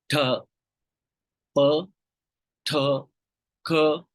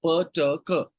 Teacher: a puff of air is released during the articulation of these sounds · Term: aspirated plosives